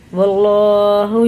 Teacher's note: اللہ کا لام زبر کے ساتھ ہے تو پر پڑھیں گے منہ بھر کے موٹا کر کے